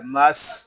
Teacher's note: سین حروف صفیریہ میں سے ہے، سین کو ادا کرتے وقت سیٹی کی طرح آواز نکلے گی